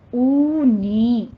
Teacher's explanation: او پہ دونوں ہونٹوں کو گول کیجئے اور 2 کاؤنٹ کرنا ہے. نی میں یا مدہ ہے، یہ واو مدہ یا مدہ دونوں کو آپ نے 2 کاؤنٹ کرنا ہے.